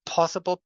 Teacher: the p, when it's at the beginning of a word, is aspirated